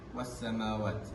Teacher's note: huruf lam tidak dibunyikan atau tidak dibaca dengan jelas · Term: alif lam syamsiah